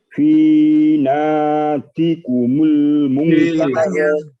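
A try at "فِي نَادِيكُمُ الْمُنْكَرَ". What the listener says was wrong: Naknya panjang, di-nya panjang sama. Tadi belum, di-nya malah kurang Bapak. Naknya udah betul panjang tapi di-nya pendek.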